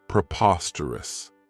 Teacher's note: The next word, and it's one that I really like, is preposterous. This adjective has 4 syllables, and the stress is on that second syllable